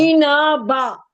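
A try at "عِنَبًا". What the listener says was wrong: इना नहीं, नू, आइन और नून को खींच। सुने, आइन और नून सुने तो सही, आप फिर गलत और गलत पे गलत पढ़ने लग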